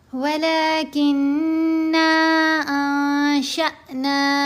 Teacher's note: यहाँ हम कैफ़ को जब नून से मिलाएंगे तो नून के ऊपर गुन्ना करेंगे